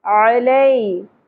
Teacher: عین کو وسط حلق سے ادا کرنا ہے